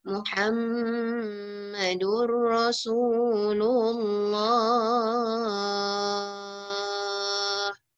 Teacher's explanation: kalau kita nak berhenti pada Rasulullah, Allah tu kita boleh panjangkan sikit. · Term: 4 harakat